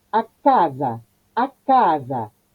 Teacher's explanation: Son 3 A y la única abierta es la del medio, que es la acentuada. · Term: La A tónica